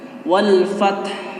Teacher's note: alif lam qamariyah itu alif lamnya itu tidak diikuti tasydid, otomatis lamnya disukunkan. Lamnya itu disukunkan.